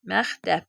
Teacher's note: Əgər sözün ortasında k samiti varsa və özündən sonra belə deyək də özündən sonra said gəlibsə k olduğu kimi, samit gəlibsə k ixə çevrilir. Məsələn deyək məktəb.